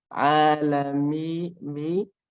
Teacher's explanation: Nah, tapi ketika sudah mulai panjang, alami mi. Nah, mulai panjangnya itu harus dihilangkan suara yang ada di hidungnya itu